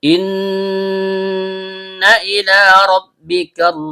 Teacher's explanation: Dimulai dengan hamza yang berbentuk seperti alif atau hamza qat'i yang berasal dari bagian bawah tenggorokan. Nun, ujung lidah bertemu dengan bagian tengah langit-langit mulut. · Kemudian karena lamnya berharokat fathah berdiri atau fathah panjang, diikuti alif maksuro atau alif bengkok, maka terjadi hukum bacaan mad tabi'i, panjang 2 harokat dan setiap panjang keluar dari rongga mulut. Ro, ujung lidah bertemu dengan langit-langit bagian belakang. · Karena nunnya bertasydid, maka hukum bacaannya gunnah asli, dibaca dengung dan setiap dengung keluar dari hidung.